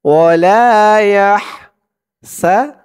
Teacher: হার আওয়াজটা গলার ভিতর থেকে চিকুন হয়ে আসবে